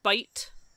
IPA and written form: bʌit (bite)